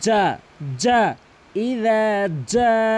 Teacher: জিমের উচ্চারণ করবেন হলকের মাঝ, জিব্বার মাঝখান থেকে